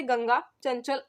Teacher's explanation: अनुस्वार का उच्चारण नाक से होता है।